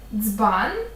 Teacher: є звук ДЗ один єдиний неподільний його ще називають африкат